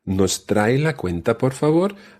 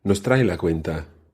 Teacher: you raised your voice at the end, showing that was a question